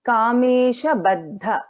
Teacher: Here the and dha. So the Alpa Prana the and then dha is a Mahaprana.